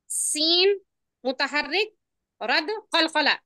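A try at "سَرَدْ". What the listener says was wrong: अब सीन नहीं पढ़े ना इसको, सा पढ़े ना। आप सीन नहीं पढ़ेगी माँ, सा पढ़े ना उसको।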